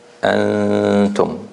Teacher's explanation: A good example of the ghunna when it is soft is in the word that is frequent in the Quran, the word antum.